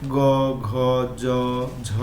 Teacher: এগুলো উচ্চারণ করার সময় এই গলায় হাত রাখলে বেশি কম্পন বোঝা যায় সে কারণে সেগুলো হচ্ছে ঘোষ ব্যঞ্জন